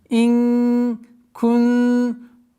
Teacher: Ихфа. Сокрытие в размере двух огласовок, назализацию удерживаем.